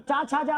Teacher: स्पर्श है, स्पर्श में कहां से उच्चारित होता है? तालु से।